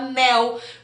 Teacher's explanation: Porque o nel é o mesmo, o N, né? É o mesmo ponto de articulação do L, só que o N é nasal